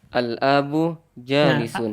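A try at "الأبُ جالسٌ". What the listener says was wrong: Nah, A-nya jangan panjang. nah jimnya yang panjang.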